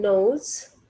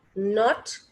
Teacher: N is pronounced with the help of tongue and alveolar ridge.